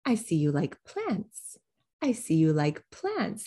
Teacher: do you hear plants getting the spotlight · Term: focus word